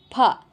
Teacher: ಪ್ರಶ್ನೆ ನೋಡಿ ಪ ಭಸ್ ಅಂತ ಅವರೇ ಕೊಟ್ಟಿದ್ದಾರೆ ಉಚ್ಚಾರಣೆ ಮಾಡಿ ಪ ಭರಳಿನಿಂದ ಕಂಠದಿಂದ ಧ್ವನಿ ಬರ್ತಾ ಇದೆ ಅವಾಗ ತುಟಿ ಕ್ಲೋಸ್ ಆಗ್ತಾ ಇದೆ ಪ ಆ ತುಟಿ ಮತ್ತೆ ವಾಪಸ್ ಓಪನ್ ಆದಾಗ ಉಚ್ಚಾರಣೆ ಆಗ್ತಾ ಇದೆ ಅಕ್ಷರ · ಕಂಠದಿಂದ ಧ್ವನಿ ಬರ್ತಾ ಇದೆ ಅವಾಗ ತುಟಿ ಕ್ಲೋಸ್ ಆಗ್ತಾ ಇದೆ ಪ ಆ ತುಟಿ ಮತ್ತೆ ವಾಪಸ್ ಓಪನ್ ಆದಾಗ ಉಚ್ಚಾರಣೆ ಆಗ್ತಾ ಇದೆ ಅಕ್ಷರ ಹೊರಗಡೆ ಬರ್ತಾ ಇದೆ ಪ ಅಂತ ಹಾಗಾಗಿ ತುಟಿಯ ಸಹಾಯದಿಂದ ಉಚ್ಚಾರಣೆ ಮಾಡೋದು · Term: ಓಷಟ್ಯ